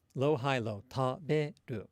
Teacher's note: the word for eat in Japanese, right? And we said that it's low, high, low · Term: pitch accent